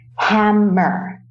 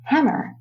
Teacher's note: So the emphasis is more towards the first syllable, hammer. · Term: word stress